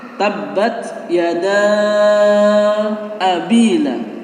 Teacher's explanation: Yada ini merupakan mad jaiz munfasil. Mad jaiz munfasil itu panjangnya antara 5 sampai dengan 6 ketukan.